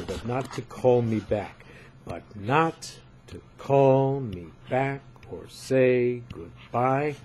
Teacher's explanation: so but and to and me and so on get less emphasis. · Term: unstressed